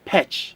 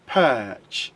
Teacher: the sound in this word is uh and remember it's a long sound not a short sound if you say petch that is a short sound you are